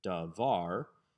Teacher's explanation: davar is not a segalet since the emphasis is on the second syllable